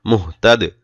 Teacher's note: দাল সাকিন করতে হবে, কলকলা করতে হবে। দাল হলো কলকলা একটি অক্ষর।